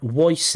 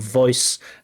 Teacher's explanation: there is a W sound instead of a V